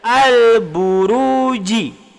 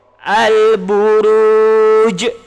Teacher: Bila kita baca al-buruji, dia tidak ada qalqalah. Yang ada yang pertama alif lam qamariyah.